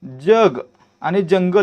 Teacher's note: देखील च चा उच्चार य जोडल्यासारखा होतोय जग आणि जंगल याच्यामध्ये ज चा उच्चार य जोडल्यासारखा होतोय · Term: तालव्य वर्ण